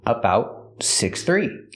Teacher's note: The T in about is a stop T.